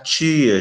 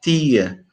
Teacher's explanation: ela começa a pronunciar tia, chiando, porque o T está diante do I